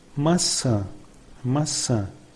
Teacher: Know the sound It has a nasal sound similar to the sound of the vowel with chew, chew. Tilde is another sign, and in Portuguese it gives a nasal sound to the vowels